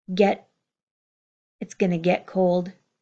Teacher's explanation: My get does not have this strong T. I hear the reduced, the held in, or the unreleased sound of the D. Get, it's gonna get cold.